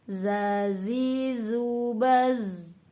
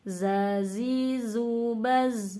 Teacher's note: ketika baca zai itu kan ada kayak desis ya, tapi desisnya itu bukan masuknya ke hames ya, tapi ke shofir. Makanya ketika kita membaca zai itu jangan ditekan, jangan zazi, zubaz, jangan begitu, tapi biasa aja zazi, zubaz.